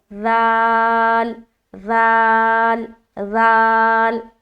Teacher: ज़ाल का मखरज क्या है? ज़बान की नोक और सनाया उलिया का किनारा। · ये हर्फ ज़ाल अदा होगा नरमी के साथ और बगैर सीटी के। लेकिन अगर आप ज़बान की नोक को सनाया उलिया के अलावा किनारे पर नहीं लगाकर दूसरी जगह लगाएंगे तो ये हर्फ कोई और हर्फ बन जाएगा, है ना।